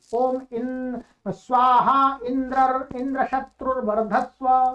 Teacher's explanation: पूर्व पद का प्रकृति स्वर करके उच्चारण किया